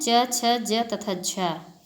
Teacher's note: कुछ ध्वनियों का उच्चारण करते समय दो अंग स्पर्श करते हैं और साथ ही एक दूसरे से थोड़ा दूर हो जाते हैं। ऐसी स्थिति में वायु का संघर्ष करते हुए बाहर निकलना पड़ता है। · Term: स्पर्श संघर्षी व्यंजन